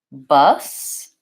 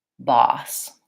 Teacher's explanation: the main difference between bus and boss is that with boss I have lip rounding